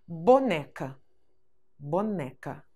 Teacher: quanto à intensidade, a sílaba mais forte é o né